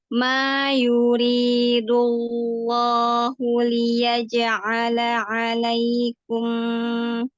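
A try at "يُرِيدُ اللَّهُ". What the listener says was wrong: Tinggal jangan menahan di gini. Yuridu, jadi gini. Dul lidahnya ya, sepi lidahnya itu yang ketara gitu. Yuri, sedikit lagi aja. Yuridullah. Nah, tinggal dibukanya, lahnya dibuka. La tinggal dibuka fathahnya lagi. Ya, jadi fathahnya itu juga jangan membulat gitu ya, tapi terbuka. La gitu, lam fathah la yuridullah.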